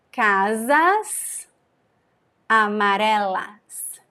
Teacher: topic is when a word ends with the concerned s and the next word begins with a vowel we have to connect them and the S is pronounced as Z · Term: linking